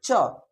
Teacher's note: च का उच्चारण स्थान जानते हैं तालू होता है